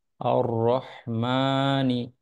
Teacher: র এ জবর আছে তাই র মোটা করে পড়তে হবে